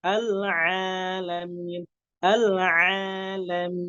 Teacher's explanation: huruf ainnya dikeluarkan secara murni dari tenggorokan bagian tengah